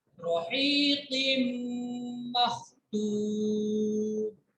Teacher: तनवीन के बाद मीम है, इदगाम हो रहा है, मिक्स करके पढ़ेंगे गुन्ना के साथ। रहीक़िम मख़्तूम।